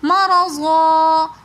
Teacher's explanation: مرضا ضاد کے ساتھ الف مد آ رہا ہے تو اس لیے ہم نے اس کو ایک الف کی مقدار کھینچ کر پڑھا